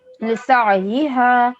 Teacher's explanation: عین کی آواز حلق کے عین، درمیانی حصے سے ادا ہوتی ہے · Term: حرف عین